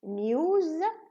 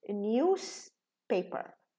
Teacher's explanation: But if it's combined with the word paper, so we reduce the za and becomes sa